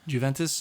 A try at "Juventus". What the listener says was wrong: Stop saying Jew. Juventus.